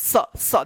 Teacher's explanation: स जीभ जो है ना दोनों दांत के पास में आएगा · जीभ जो है ना दोनों दांत के बीच में आएगा तब जो है ना उच्चारण होगा इसका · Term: दंत स